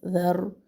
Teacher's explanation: ذال کو نرمی سے پڑھنا ہے، را کو موٹا پڑھنا ہے